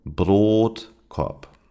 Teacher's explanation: The last word Brotkorb is pronounced with the long O in Brot, although it is followed by two consonants. The reason is that it's a compound noun, Brot, bread, and Korb, basket.